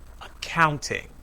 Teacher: in accounting the second syllable is stressed